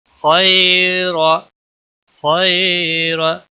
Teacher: खैर, खैर, या लीन है, थोड़ा नरमी के साथ खींच कर अदा करेंगे। रा के ऊपर ज़बर है इसलिए मोटा पढ़ेंगे।